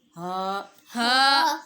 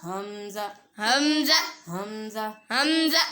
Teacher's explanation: واو واو واو ہا ہا ہا ہا حلق کے آخری حصے سے ہا ہا حمزہ حمزہ حمزہ حمزہ ان دونوں کا مخرج ایک ہی ہے، یعنی حلق کے آخری حصے سے یہ ادا ہوں گے۔